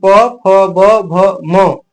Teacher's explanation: प बोले तो दोनों होठ सट रहा है अब मान लीजिए बिना दोनों होट सटाए आप पफ कभी नहीं बोल सकते हैं · स्थान है ये ये जो होते हैं ये ओठ होते हैं जब तक दोनों ओठ नहीं सट तब तक इन वर्णों का उचार स्थान नहीं हो सकता है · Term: ओष, ओष्ठ